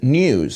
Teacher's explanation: He doesn't drop the yod in. In news.